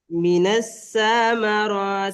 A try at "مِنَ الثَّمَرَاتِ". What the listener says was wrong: সাথে টান হয়ে যাচ্ছে। মিনাস সামারাত।